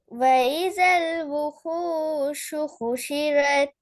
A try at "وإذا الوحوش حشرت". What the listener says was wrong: கொஞ்சம் டோன் மாறுது.